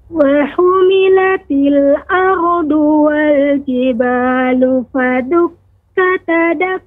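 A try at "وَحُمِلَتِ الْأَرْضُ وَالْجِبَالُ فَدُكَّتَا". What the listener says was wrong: di sini ada mad, 2 harokat. Fadukkata, nah seperti itu. Kemudian do, ya perhatikan pengucapan do, dua tepi lidah atau salah satunya mengenai gigi geram atas. Ardu, du, ya du. Bisa kanan, du, kiri, du, atau kedua-duanya, du. Wa humilatil ardu, jangan sampai dengan ujung lidah jadinya ardu. Nah, seperti itu, ardu. Nah, ini kurang tepat.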